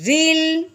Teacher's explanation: رو لام زیر ریل. رو کے نیچے زیر ہے، اس کو باریک کریں گے